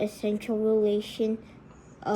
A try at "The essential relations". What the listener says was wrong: You're not saying it right. Slow down. You're reading too fast. The essential relations. You didn't add the S when you said it, okay?